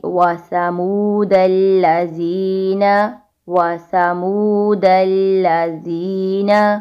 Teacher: زال, سا اور وا, یہ 3 حروف تب ادا ہوں گے جب زبان کی نوک دانتوں کے کنارے پر لگے گی